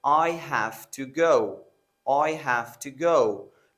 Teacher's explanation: So the to is often reduced to ta.